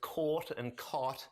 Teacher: for speaker like me there is caught and cot and those are different vowels